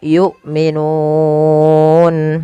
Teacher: hamzah harus ditahan suaranya dan ditahan nafasnya karena sifat hamzah ada syiddah dan jahar